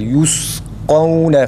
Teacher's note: Yusqavne mesela birinci kaf a sesiyle okunur. Çünkü burada mukadder bir elif var demiştik.